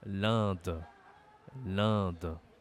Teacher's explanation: Gambie la Gambie l'Inde l'Inde attention ici pour prononcer ce pays tu dois utiliser ton nez c'est une voyelle nasale